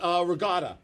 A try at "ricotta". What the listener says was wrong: I'm like, it's not a G, it's a C in there.